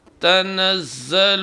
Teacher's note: تنزل کے زے کو ادا کرتے وقت سیٹی کی آواز آنا چاہیے، آواز بھاری نہیں ہونا چاہیے